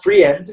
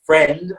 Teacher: not free end it's friend okay it's just it's just one it's not a diphthong this is tricky because you might think it's a diphthong um and it isn't it's just an e